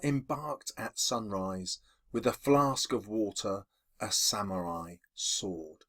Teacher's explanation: the way I've read that is to emphasize the sibilants this repeated S sound gives it a sign of peace and that peaceful sound reflects